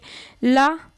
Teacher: ऐसे व्यंजन वर्ण जिनके उच्चारण में वायु के बगल से टकरा कर बाहर निकल जाती है ला एकमात्र ऐसा व्यंजन है जो पार्श्विक व्यंजन कहलाता है ना